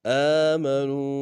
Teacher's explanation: حمزہ کے اوپر کھڑا زبر ہے، ایک انداز میں کھینچیں گے